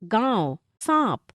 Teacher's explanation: अनुनासिक का उच्चारण गले और नाक दोनों से होता है